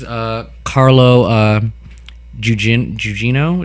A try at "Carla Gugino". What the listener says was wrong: Carla Gugino. I was like, who's Carlo? I've never heard of an actor named Carlo.